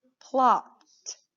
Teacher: you notice that ed, it says t at the end of plopped